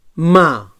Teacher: So bilabial nasal sonor